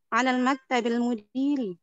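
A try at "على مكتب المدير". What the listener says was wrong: Tidak ada alif lam di sini.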